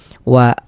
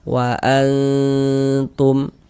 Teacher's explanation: Sehingganya ini kita baca wa jangan dibaca waan, tapi disamarkan bunyi nun sukunnya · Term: ikhfa